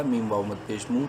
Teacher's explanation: 3 الف کے برابر لمبا کریں گے میم کو